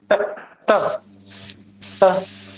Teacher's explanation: त जब भी बोलोगे तो आपका जीभ आपके दांत में आएगा।